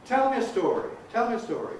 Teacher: Now the happy vowel is compressible before a weak vowel